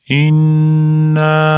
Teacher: Nun idg'om bo'lib tashditli kelganligi uchun g'unnaq qilib ushlab turamiz.